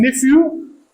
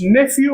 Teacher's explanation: pH can be pronounced either F or V